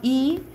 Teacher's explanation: 전설이면서 고모음에서 평순인 건 이